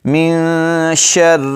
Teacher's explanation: من شر ما خلق، یہاں نون پر جو ہے اخفا ہوگا، نون ساکن کے بعد حروف اخفا جو ہیں ان میں سے شین آ گیا ہے، تو من آواز کو ناک میں چھپا کر پڑھیں گے۔ من شر، را کو باریک پڑھیں گے، را پر شاد آ جائے تو بہت سارے احباب جو ہیں وہ را کو موٹا کر لیتے ہیں، تو یہاں پر آپ نے را کو باریک پڑھنا ہے۔